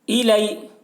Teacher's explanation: یا ساکن سے پہلے زبر ہے، یالین ہوا اس لیے یالین کو نرم آواز کے ساتھ جلد پڑھیں، معروف پڑھیں، مجہول آواز سے بچیں.